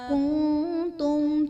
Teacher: کنتم میں نون ساکن کے بعد حروف اخفا میں سے تا ہے تو یہاں پر اخفا کا قاعدہ ہوگا